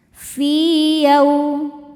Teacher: fi hukumnya mad thobi'i zohiri karena ada ya sukun sebelumnya kasrah. Cara bacanya panjang dua harakat.